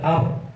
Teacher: Kalau membunyikan rohnya itu bergetar ar, itu salah.